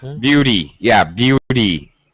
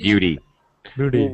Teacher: flapped D sound is specifically American